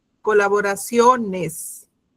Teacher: La sílaba tónica está en sio